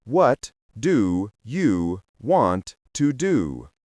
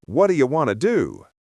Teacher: The hard T in what softens to a duh sound. The O in do and in you are reduced to a quick, unstressed sound, known as a schwa, the most common sound in English. Then, want to melts into wanna. · The O in do and in you are reduced to a quick, unstressed sound, known as a schwa, the most common sound in English. Then, want to melts into wanna. The two words become one.